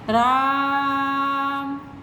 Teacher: रा बोल करके आ को खींचा जा रहा है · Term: प्लुत स्वर